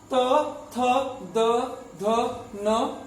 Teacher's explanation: त वर्ग का उच्चारण दंत से होता है